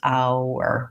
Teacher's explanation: And we just want to have enough length in the ow syllable, our. It's really a one-syllable word, but we can kind of think about it as being two syllables, our, when you go slowly.